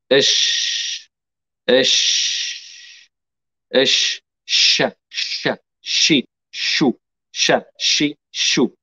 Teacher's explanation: الشين من وسط اللسان مع وسط الحنك الأعلى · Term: مخرج الشين